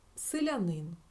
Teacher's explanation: якщо ненаголошений звук Е то ми його вимовляємо наближено до і